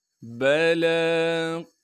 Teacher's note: لن نجمع عظامہ بلی قادرین، با کو بغیر کھینچے پڑھیں گے، لام پر کڑا زبر ہونے کی وجہ سے لام کو ایک الف کے مقدار کھینچیں گے ، لام کے بعد یا موجود ہے اسے ہم نہیں پڑھیں